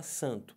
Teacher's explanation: não fala dois sons você não fala o a e depois o som do n